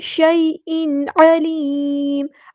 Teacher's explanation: بھی واضح یہاں پہ رکھنا ہے، شیء نہیں کرنا، شیء علیم عین کو وسطی حلق یعنی مڈل تھروٹ سے ادا کرنا ہے ، لام باریک ہے اور میم کو ہم ساکن کر دیں